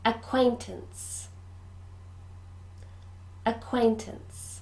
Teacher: this word has three syllables and we stress the middle one